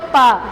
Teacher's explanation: जैसे ही प बोलते हैं दोनों ओष्ठ सट जाते हैं